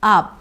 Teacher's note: So, to pronounce this word, we start with 'aa' as in father, and then it's a B sound, very small one